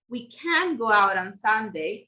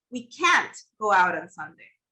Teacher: the negative form can't, this never goes unstressed. It's always pronounced.